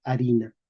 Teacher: Español moderno, escribimos con H, porque mantenemos la escritura, la pronunciación medieval, pero no pronunciamos la H, decimos A